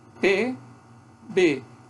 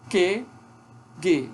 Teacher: na articulação do PB, os dois lábios bloqueiam a passagem do ar. Na articulação do QG, é a parte posterior da língua, que bloqueia a passagem do ar lá no véu palatino.